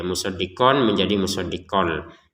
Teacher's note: kita harus memasukkan tanwinnya qaf kepada lam sehingga terbacanya musaddiqol ya. Musaddiqon menjadi musaddiqol.